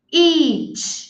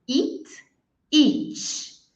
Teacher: a primeira é o I longo, I, o nosso I do português.